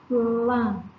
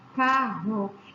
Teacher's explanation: Encontro consonantal, plan, eu escuto os 2 sons. No dígrafo, eu não escuto, como no exemplo da palavra carro, esse RR produz apenas um som.